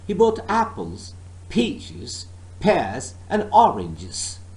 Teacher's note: I did not stress he and bought but I stressed first part of Apple and then peaches pears oranges